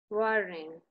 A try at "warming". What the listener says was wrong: Es una M, no una N.